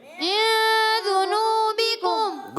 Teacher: ایک الف کا غنہ بھی کریں گے، یہاں غنے کی ادائیگی ہوگی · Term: اخفا